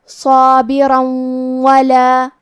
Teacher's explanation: کلمت ولا، واو حروف الادغام بغنہ میں سے ہے، اور ادغام کا معنی ہے حرف کو حرف میں داخل کرنا، تو ہم یہ تنوین کو واو میں ملا کے غنہ اور تشدید کے ساتھ یہ حکم کو ادا کریں گے